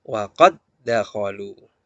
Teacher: Jangan dibaca qalqalah karena terjadi idgham